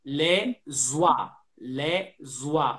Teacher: Then only to remember the liaison between les oiseaux. We have a silence, but we do the liaison. We put the sound S in front of wa.